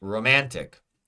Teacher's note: Second syllable, the man, the ah in man. Romantic is stressed.